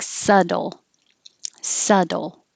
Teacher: The B is silent, so you don't have to say it at all. And the T changes to a D. So it sounds like subtle, subtle.